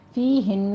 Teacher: فی ہن میں یائے مدہ ہے، 2 کاؤنٹ کرنے ہیں ، ہن میں غنہ ہوگا اکمل غنہ، اس کو آپ نے